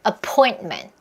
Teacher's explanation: 스탑 사운드 처리해서 appoint 하고 혀끝을 입천장 맞고 ment 하면서 같이 터지는 것도 괜찮습니다. 이렇게 처리하는 방법이 바로 스탑 T 사운드 처리하는 거예요.